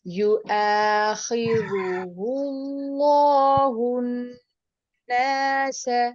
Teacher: پیش کے بعد اللہ کا نام پر کر کے پڑھا جائے گا اور نون مشدد حالت میں، اس لیے اس کے اوپر جو غنہ ہے اس کی مقدار پوری رکھیے